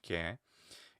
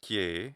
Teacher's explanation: It's an open vowel, e. Ke. More or less true mid, but it's somewhat open.